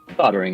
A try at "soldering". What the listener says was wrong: No, it says soldering. It's an L in there.